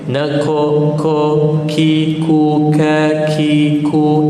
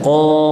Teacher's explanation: Kaf ya. Nako, ko, ki, ku, ka, ki, ku, nipis. Tapi qaf tebal.